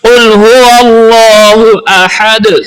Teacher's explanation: اللہ کے لام سے پہلے زبر ہے، اس لیے اللہ کے لام کو پر پڑھا جائے گا۔ احد، ہا کو ہا نہیں بنانا، احد پڑھنا ہے۔